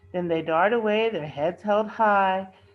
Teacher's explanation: the Rhythm always ends on an accented syllable